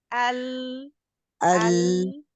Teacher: ये सबसे ज्यादा वाइड मखरज है, यानी चौड़ाई में जुबान जाके चौड़ी होती है और फिर जाके लगती है जब हम अल अदा कर रहे होते हैं। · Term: लाम